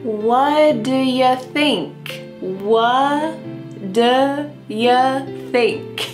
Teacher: Here the final T on the question word what is cut off. We just say w and then instead of saying do with a nice ooh sound. · We just say w and then instead of saying do with a nice ooh sound. Instead it sounds like duh. W. And then the next word u is going to have a similar sound.